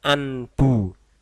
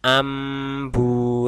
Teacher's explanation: iqlab artinya merubah atau membalik pengucapan nun mati atau tanwin yang bertemu dengan satu huruf saja yaitu Bah maka huruf nun atau tanwin tadi berubah menjadi lafal Meme